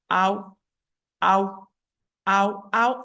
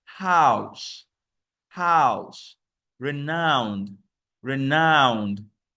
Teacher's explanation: ow is a glide from the ah sound to oo sound. And you can find this sound in words like house, house, renowned, renowned.